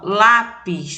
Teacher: a sílaba mais forte é a penúltima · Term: paroxítonas